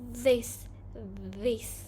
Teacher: pronunciations with a tongue tip between the upper and lower teeth